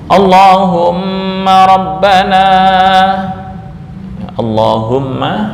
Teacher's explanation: Pada lafal Allah menjadi Allahumma, tapi pakai syarat baik ketika dibaca pada permulaan maupun setelah didahului fathah atau setelah didahului dhammah. Ingat syarat Allahumma, lamnya dibaca tafkhim, yang pertama di permulaan, yang kedua didahului oleh fathah. Nah, ini fathah, atau yang ketiga didahului oleh dhammah.